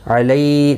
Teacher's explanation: حرم، را زیر کی وجہ سے باریک پڑھا جائے گا، باقی کسی بھی حرکت والے حرف کو کھینچنا نہیں. علی، لی یا لین ہے، تھوڑا نرمی کے ساتھ کھینچ کر ادا کریں گے